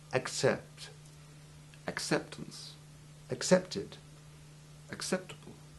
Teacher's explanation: You make the hard C sound using the back of your tongue against the back of your palate. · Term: soft double C